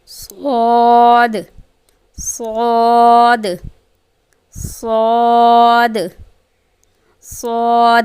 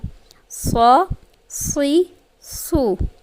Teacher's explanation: صاد کہتے ہوئے پیچھے سے زبان تھوڑی اوپر اٹھے گی تاکہ صاد پر ہو، یعنی کہ موٹا ہو۔